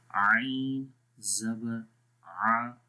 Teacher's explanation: مجھے تو فیل ہو رہا ہے کہ یہ آواز گلے کے درمیان والے حصے سے آ رہی ہے